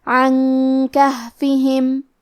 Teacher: کاف حروف الاخفاء میں سے ہے تو ہم یہ حکم کو غنہ کے ساتھ ادا کریں گے